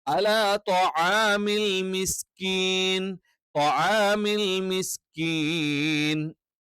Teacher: ത്വആമി എന്ന് പറയുമ്പോൾ ഇത് കറക്റ്റ് ഐനായിരിക്കണം. ഇത് അംസ ആയി പോകാൻ പാടില്ല, അതേപോലെ തന്നെ ഗൈനായി പോകാനും പാടില്ല.